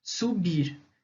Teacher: uma palavra oxítona, porque o som, a sílaba tônica dela é a última, é o bir